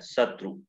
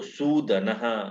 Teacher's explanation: शत्रु में छोटा ऊ है शत्रु, और सौ में सूदन वाले सौ में दीर्घ उकार है